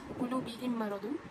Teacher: Bihim maradun tu itu adalah idgham mithlain sebab idgham mithlain kerana huruf mim bersukun bertemu dengan huruf mim. Jadi ianya dibaca dengan dengung dan ditahan selama 3 harakat.